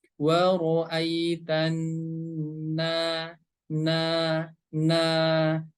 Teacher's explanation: Huruf nun berharokat fathah, setelahnya ada huruf alif, maka ini harus dibaca panjang dua harokat. Wa ra'aitanna, na.